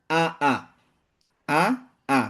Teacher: Maka dikatakan 2 harokat. A dengan A ini 2. Maka sepanjang itulah.